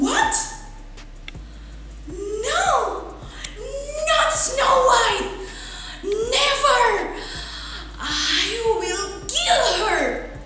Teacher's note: di situ ada penekanan-penekanan khusus terhadap kata-kata yang misalnya ingin membunuh, kill, atau di situ juga what. Nah, di situ ada nada suara yang semakin tinggi seperti itu, ya.